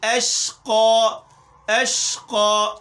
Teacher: شین میں تفشی پیدا کرنی ہے